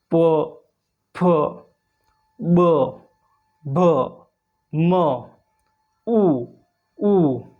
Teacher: प वर्ग ओष्ट इन वर्णों को बोलते समय हमारे होठ दोनों मिल जाएंगे। गोल आकृति में हो जाएंगे। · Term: ओष्ठ वर्ण